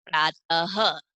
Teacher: तो उच्चारण के टाइम हम ह की ध्वनि निकालेंगे